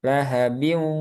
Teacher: Jadi ada sifat gunahnya. Biu masih masuk hidung dia. Lahabiu. Coba masukkan ke hidung. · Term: gunnah